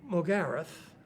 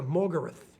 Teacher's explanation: We tend to emphasise in a 3-syllable word the middle syllable, where Americans tend to emphasise the first syllable.